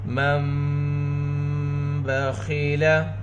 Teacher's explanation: جب نون ساکن یا تنوین کے بعد دو زبر دو زیر دو پیش کو تنوین کہتے ہیں، حرف با آئے تو نون کی آواز کو میم سے بدل کر گنہ کے ساتھ اخفا کریں گے، اس کو اقلاب کہتے ہیں۔